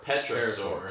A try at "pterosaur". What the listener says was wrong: Pterosaur. P is silent, people.